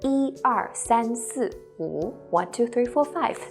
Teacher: When 一 is used as a numeral in sequence, such as when you're counting, it is the first flat tone.